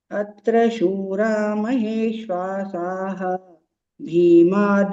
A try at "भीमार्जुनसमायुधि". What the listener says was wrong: Bhimarjuna. There also you are missing Mahapranas.